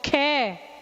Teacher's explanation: अब आप बोलते हैं ख, कुछ मेहनत करनी पड़ती है, तो वो क्या होते हैं महाप्राण